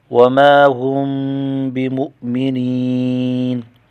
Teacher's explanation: وما هم بمؤمنین، میم کو ایک الف کھینچ کر پڑھیں گے، الف مدہ ہے، اور میم ساکن پر غنہ کریں گے، اخفاء شفوی ہے۔ بمؤمنین، یا ساکن کا یا مدہ ہے، ایک الف کھینچیں گے، نون وقف کی صورت میں ساکن پڑھا جائے گا۔